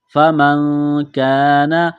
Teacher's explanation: نون ساکن کے بعد یہاں پر کاف ہے تو آواز ناک میں چھپائیں گے، غنہ کریں گے۔ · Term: اخفا